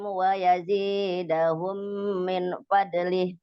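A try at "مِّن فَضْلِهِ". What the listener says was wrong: Kok min dibaca izhar itu kenapa? Kan ketemu fa.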